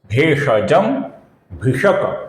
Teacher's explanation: यहां पर क अपूर्ण है, किंतु पद के अंत में आने के कारण हम इसका लगभग पूरा उच्चारण करेंगे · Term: अपूर्ण क